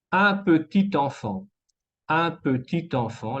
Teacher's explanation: la T se conecta con le en, la vocal en de enfant